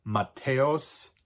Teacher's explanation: In those two cases, the ä and the u are separated. They're not pronounced like an oi, but as an ä-u. Two separate sounds.